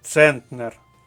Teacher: наголос іде на перший склад